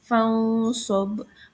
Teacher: Alasannya karena nun sukun bertemu dengan huruf sod. Nah, cara bacanya itu samar dan dengung ditahan 3 harokat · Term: ikhfa